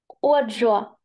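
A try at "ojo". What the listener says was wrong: Це не G, це не англійська, це літерка хота. Літерка хота завжди читається. Як глухий Х. Тут трошки забудьте, що це літерка G в англійській мові. Тут у нас це літерка хота. І читається як х, охо.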